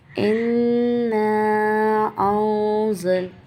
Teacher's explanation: او کے بعد کیا ہے زا، مطلب کہ اخفا ہے، نون کو چھپانا ہے. ان انزل، دیکھا میں نے کیسے چھپایا.